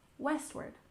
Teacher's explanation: we stress the first syllable in westward